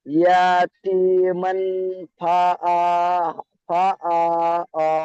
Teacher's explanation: তাই তানবিনের আওয়াজকে নাকে তুলে একালি পরিমাণ গুণনা করে পড়তে হবে